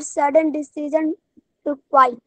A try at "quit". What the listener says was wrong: Sudden decision to quiet. No, it's not quiet. It's quit. Quit.